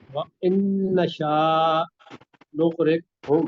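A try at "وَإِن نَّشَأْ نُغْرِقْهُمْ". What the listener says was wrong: نہیں نشا اس کو کہیں، الف ہے نا اس کے اوپر جزم ہے،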